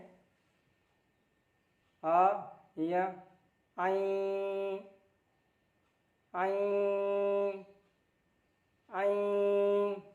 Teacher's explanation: तो इया का आवाज़ नाक में ले जाना है, नाक से इसका साउंड निकालना है। आ लगा के पढ़ेंगे आ या आई आई आई।